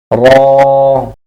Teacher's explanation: জিহ্বার আগার পিঠ তার বরাবর উপরের তালুর সঙ্গে লাগাইয়া